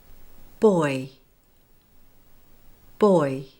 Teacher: My lips went from rounded to neutral. And my tongue moved forward and upward at the same time as my jaw closed. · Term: diphthong oi